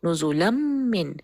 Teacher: اب میم کے اوپر جو شدہ ہے ہم صرف اس کا غنہ کریں گے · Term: کمپلیٹ ادغام